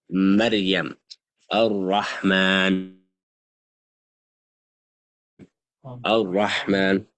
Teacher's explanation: Taqreer is that quality when pronounced, there will be a shiver on the tongue.